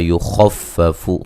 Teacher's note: خا کو موٹا ادا کریں گے اور خا کو فا سے سختی سے ملائیں گے